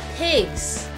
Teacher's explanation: 손으로 여러분 목을 이렇게 만져보시면 pigs, 바이브레이션이 있단 말이에요.